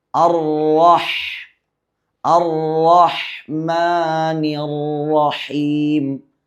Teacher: ഹാഇൻ്റെ മഖ്റജ് തൊണ്ടയുടെ മധ്യഭാഗമാണ്